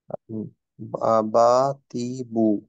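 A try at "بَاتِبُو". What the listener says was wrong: না, বুতে টান হয় নাই। বাতি বু।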